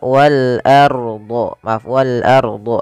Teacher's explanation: Kemudian pada lafal wal ardi di sini ada alif lam qamariyah, yaitu alif lam yang kita tulis dan kita baca dengan jelas suara lamnya. Maka wal ardu, wal ardu ya, bukan wal ardi.